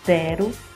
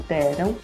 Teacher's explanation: Nós encontramos a desnasalização, que é a troca do final an por vogal, como exemplo, deram, no lugar de deram.